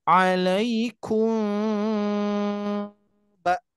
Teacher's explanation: jadi ada pertemuan mim sukun bertemu ba terjadilah dengungan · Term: Ikhfa Syafawi